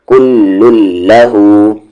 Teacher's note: کل لام میں کیسے ملا رہے ہیں, زور سے, کیونکہ تشدید ہے